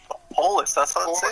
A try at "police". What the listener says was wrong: the emphasis on the wrong syllable.